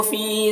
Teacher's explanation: فی میں یا مدہ ہے، اسے بھی 1 الف کے برابر کھینچیں گے